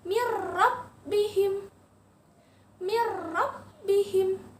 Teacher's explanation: Huruf nun sukun lebur lagi, masuk ke huruf ro.